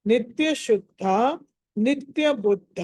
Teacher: ద కింద ధ ఒత్తు ధ అన్నది మహాప్రాణం